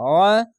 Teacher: আইনটিকে একটু মোটা করে পড়বেন এবং গলা চিপে পড়বেন